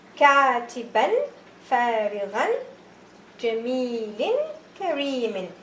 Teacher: I don't say here katiban. No, the fatha tanween does not get longer. It is one haraka as I say.